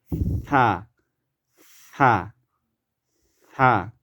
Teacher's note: এখন কথা হচ্ছে এই সায়ের উচ্চারণটা হবে আপনার জিহ্বার সামনের দিক, অগ্রভাগ, উপরের দাঁতের সাথে লাগায়ে একটু বাতাস ফেলতে হবে। যেমন থা, থা, থা।